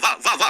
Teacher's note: अब जब वाह बोलोगे तो इसमें दांत भी लग रहा है, दंत लग रहा है, दंत वाह वाह, और ओठ भी लग रहा है, ओष्ठ भी लग रहा है ना? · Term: दंत्योष्ट व्यंजन